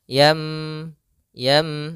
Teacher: suara nunnya atau suara tanwinnya dirubah menjadi suara huruf mim maka di sini ada huruf mim kecil di atas huruf nun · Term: iqlab